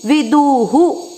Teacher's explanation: ऊ की मात्रा है दू में, तो विसर्ग को पढ़ेंगे हु